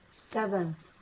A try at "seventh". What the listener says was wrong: Not 7, 7th. You've got to get the th at the end. 7th.